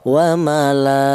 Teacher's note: Alasannya ada mad thabi ini berjumpa dengan hamzah berada di satu kalimah. Ini panjangnya yaitu dua alif setengah atau lima harakat. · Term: mad wajib muttasil